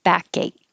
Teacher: the last K, I hold it, but the middle K will connect to the A, so you hear it.